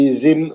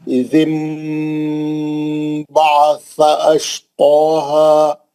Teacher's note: वो जो नून की आवाज है उसको मीम से बदलकर गुन्ने से पढ़ेंगे। इज़िम, जाल को ज़बर लगाएंगे।